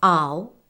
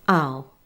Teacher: Compare the two sounds with an open mouth, ow, with a less open mouth, ow.